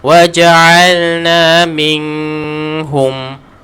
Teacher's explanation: Jadi jelaskan huruf nun, jangan baca dengung. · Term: izhar halqi